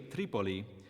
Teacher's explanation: the name of the city Tripoli is stressed on the antepenultimate or third syllable from the end